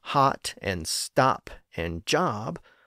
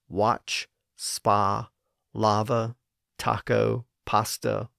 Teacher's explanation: the short O sound in standard American English is often pronounced the same way as the A sound in words that retain that older ah vowel sound. So words like hot and stop and job, all spelled with an O, have the same vowel sound as words spelled with an A, like watch, spa, lava, taco, pasta, lager, father, and so on.